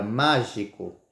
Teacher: que vemos que a palavra mágica é uma proparoxítona porque usam falamos a antepenúltima sílaba com mais intensidade